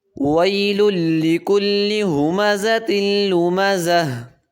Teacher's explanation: وقف جب کریں گے تو ہا بن جائے گی